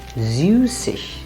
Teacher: Then we add the ig, which we pronounce as ich.